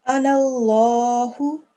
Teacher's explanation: Yeah, so because the noon here is carrying fatha, the lam next to it, because Allah's name, whenever there's a letter before which is carrying a fatha or a dhamma, the lam would be a majestic lam, and you would thicken it. Very well done. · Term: thick lam